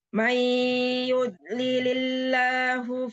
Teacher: jadi harus masuk hidung ya karena ini idgham bigunah. Idgham itu masuk bi dengan gunah ya.